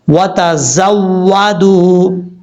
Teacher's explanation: یہاں پر واو مدہ ہے، ایک الف کی مقدار لمبا کر کے پڑھیں گے